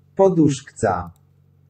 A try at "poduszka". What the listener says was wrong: Poduszka, without the Z. You put the Z in the wrong spot.